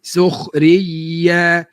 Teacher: Sebab ada syiddah, suara terputus. Ada pun huruf ya tidak diputuskan suara sekalipun dia itu bersabdu. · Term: suara rakhawah